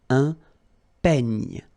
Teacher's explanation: It's ny, the last sound. And then this E combination will give you this E, open E